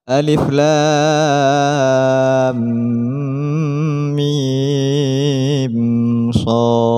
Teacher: Alifnya dibaca pendek, lam 3 alif, mim 3 alif, dan shad 3 alif. Diakhiri dengan huruf qalqalah, maka terdapat pantulan.